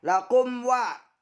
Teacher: karena mim sukun bertemu dengan waw, dibaca jelas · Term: idhar safawi